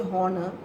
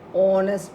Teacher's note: H is silent here. So O is very evident, prominent, clear. Honest, pronouncing as honest. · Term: O sound